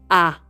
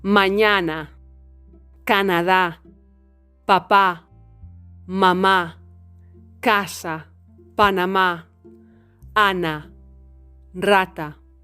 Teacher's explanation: The mouth is very open and the tongue is at the center. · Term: La vocal A